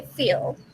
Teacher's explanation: if that L is at the end of a word, that L is pronounced like at the back